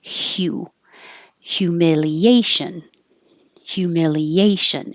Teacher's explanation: it's h y u so your tongue has to start in a high position for a y